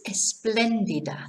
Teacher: notice where the accent is on the second e so it's not esplandida it's esplendida so fuel esplendida okay so